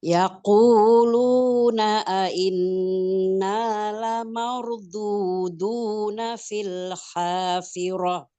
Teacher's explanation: menahan gunnahnya lebih lama daripada madnya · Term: gunnah musadadah